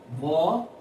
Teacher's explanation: व का उच्चारण होते समय ऊपर वाले दांत नीचे वाले ओष्ठ से स्पर्श करते हैं